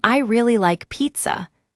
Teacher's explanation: For example, in I really like pizza, we stress really.